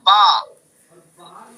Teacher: ٹھیک ہے، تو یہ بھی صرف اندر باہر کا مسئلہ ہے، یعنی تر والے حصے سے، دونوں ہونٹوں کے تر والے حصے سے با کو ادا کریں گے